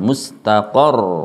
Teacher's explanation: harus nampak tasydidnya dengan cara ditekan dan suaranya diangkat sedikit.